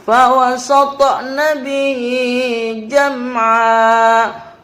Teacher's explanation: jam ada mim sukun bertemu dengan huruf ain, dibaca jelas, tidak boleh mendengung, disebut izhar syafawi.